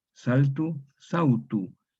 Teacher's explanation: Entonces se forma, aquí tenemos una L agrupada, se vocaliza en vau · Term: vocalización